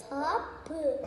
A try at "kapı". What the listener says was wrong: Aa, yine tapu duydum. Şimdi geldim. Dilimi arkaya götürdüm. Ka.